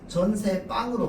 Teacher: 사이소리 현상이 일어나서 전셋빵으로 발음해야 돼요